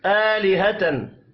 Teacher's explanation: आ खड़ी जबर है, एक अलिफ के बराबर खींच कर पढ़ेंगे।